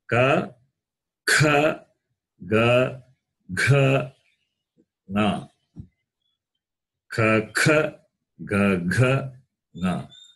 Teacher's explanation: now these consonants in the first group, they are gutturals. It means what? The sound comes from the throat. · the first class has throat. It has got throat as its place of pronunciation. Therefore, they are gutturals.